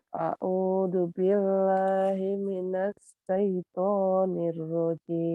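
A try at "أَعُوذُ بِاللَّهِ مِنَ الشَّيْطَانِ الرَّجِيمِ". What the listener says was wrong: Sinnya jangan lupa. A'udzu billahi minasyaitonir rajim. Ayo, shin.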